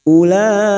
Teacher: tetap lima harakat kita panjangkan